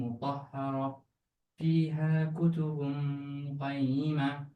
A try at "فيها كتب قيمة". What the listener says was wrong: Don't close your mouth.